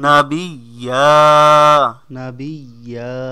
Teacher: নাবিয়্যা দুই জবরে থামিলে এক আলিফ টানিয়া পড়িত হয় অথবা দুই জবরে থামিলে এক জবর বাদ হয়ে যায় এক জবর